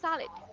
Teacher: All right, and for this one, okay, we have, chúng ta có trọng âm đầu tiên đúng không ạ? Trọng âm sẽ nằm vào cái âm tiết đầu tiên, và mọi người chú giúp em là cái ending sound là âm d.